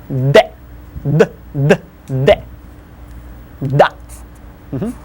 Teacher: Unlike English D, which is pronounced on top of your gums up there, move your tongue towards the teeth, kind of place it between your teeth and push it away.